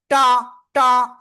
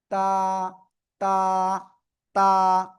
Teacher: জিহ্বার আগা, সামনের উপরে দুই দাঁতের গোড়ায় লাগান